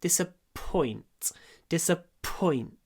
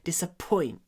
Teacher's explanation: из-за того, что п и ц глухие, наш ой, ой произносим неполным голосом.